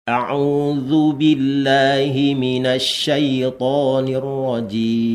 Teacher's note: itu mim itu punya sifat tawassut ya. Kalau tawassut itu jangan terlalu banyak, jadi tengah-tengah ya